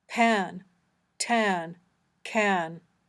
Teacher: when the sounds p, t, and k come at the beginning of a word, we pronounce them with a small puff of air